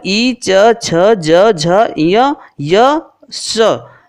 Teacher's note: ये तालब्य वर्ण है, अर्थात इनका उच्चारण स्थान तालु है